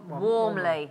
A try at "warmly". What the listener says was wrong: Warmly. You don't say the L. Warmly. Warmly.